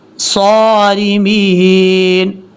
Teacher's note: صاد حروف مستعلیہ میں سے پر پڑھا جائے گا. را بریک پڑھیں گے کیونکہ را کے نیچے زیر ہے